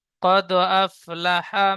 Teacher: দালের উপরে সাকিন এসেছে দালটি কলকলা করে আগের অক্ষরের সাথে মিলিয়ে পড়তে হবে